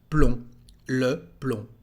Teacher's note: And here, as you can see, there is no B. We don't pronounce the B at the end.